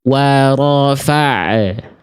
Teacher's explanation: Biar bunyi makhrajnya masih aktif, jangan dipasifkan dulu, jangan dinonaktifkan dulu makhrajnya. Nih, kalau kita lepas, kita longgarkan makhraj ainnya, di situ ada bunyi pantulan. Wa rafa'. Tuh, itu karena dilonggarin, tekan terus.